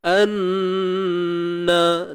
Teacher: Wa'lamu an, dengung wajibul gunnah, wajib dengung kadar 2 harakat.